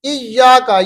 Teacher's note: یہاں پر ہم نے یا کو تھوڑا سا کھینچنا ہے، کا کو نہیں کھینچنا